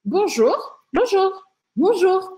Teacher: em geral a entonação vai subir